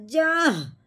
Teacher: ये मोटी हा है, हलक की गहराई से निकलती है। इसके ऊपर जो बनी हुई दाल नुमा, इसको कहते हैं जज़म।